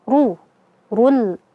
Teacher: Ra-nya kita baca tafkhim, tebal karena dia dhammah